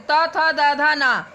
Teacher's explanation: ता वर्ग त थ द ध ना, दांत का भाग जीवा के अग्र सिरे से स्पर्श होता है